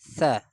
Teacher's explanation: سا کو زبان کو تھوڑا دانتوں کے درمیان نکال کے نرمی سے ادا کرے